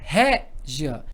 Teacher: O I vai ser semivogal, porque é mais fraquinho, e o A vai ser vogal. Então, eu tenho semivogal mais vogal. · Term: ditongo crescente